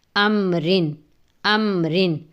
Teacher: میم ساکن جو ہے اس کی آواز کو ناک میں نہیں لے کے جانا، اس پہ دیر نہیں لگانی